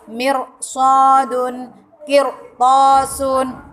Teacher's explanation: Nah, itu dibaca tebal semuanya. Jadi apabila ada ro mati sebelumnya berharokat kasroh dan bertemu huruf isti'la, maka harus dibaca tebal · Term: ro sukun